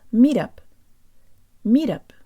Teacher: Say it fast so that the T is made with a flick of the tongue.